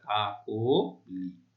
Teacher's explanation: সেই মধ্য অ এর উচ্চারণ সংবৃত বা ও এর মতো হয়